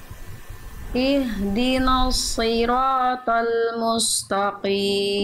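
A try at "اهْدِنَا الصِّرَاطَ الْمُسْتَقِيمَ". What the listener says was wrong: Oh, Bunda, huruf nun, huruf tipis, huruf ta, huruf tipis, jangan ihdinos, bukan no, tapi na. Lalu mustaqim bukan musta, Ihdina siratal mustaqim.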